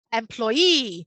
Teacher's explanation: so thinking about the number of syllables first employee and then noticing that the students have to put the stress on the last syllable